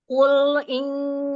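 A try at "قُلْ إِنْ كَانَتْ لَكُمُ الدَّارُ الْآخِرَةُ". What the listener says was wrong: Tahan, lam sukun jangan buru-buru. Selesaikan lam sukunnya.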